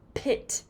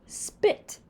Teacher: Notice that the p is not as strong. Students may write this word as S-B-I-T, spit.